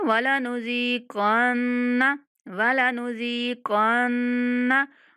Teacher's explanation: नून को नहीं खींचना और ज़ाल को खींचेंगे, काफ को मोटा पढ़ेंगे और नून पर गुन्ना करेंगे।